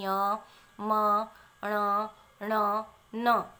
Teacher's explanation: इनका उच्चारण हम नासिका से करते हैं, यानी नाक के द्वारा इनकी ध्वनि निकलती है। इन वर्णों को उच्चारण करने के लिए नासिका का प्रयोग किया जाता है, तो ये नासिका वर्ण कहलाते हैं।